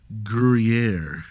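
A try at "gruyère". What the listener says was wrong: Gruyere. Well, you sort of gulped it out. You were like Gruyere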